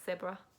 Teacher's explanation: the Z is usually replaced with an S